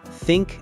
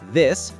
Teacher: TH in think and this, tongue lightly between the teeth. Air for think, voice for this.